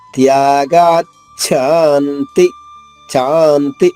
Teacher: చా రెట్టింపు సమయం, మళ్ళా అంతి తక్కువ సమయం. త్యాగాచ్ఛాంతిరనంతరం గా పైన ఆఘాతం ఉంది కాబట్టి చాలోని చా 2 చాలు అవుతుంది. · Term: దీర్ఘాక్షరాలు